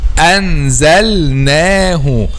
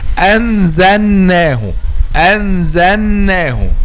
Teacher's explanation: The third common mistake, however, is to make idgham or merging of letter lam with the letter next or the letter after, especially with the letter noon. Okay, because their points of articulation are close, so some people make merging or idgham.